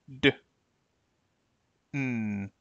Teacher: all require taking your tongue and placing them directly behind the upper teeth on what is called the alveolar Ridge